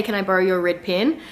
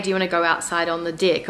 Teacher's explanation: So I think, you know, our E's sound like I's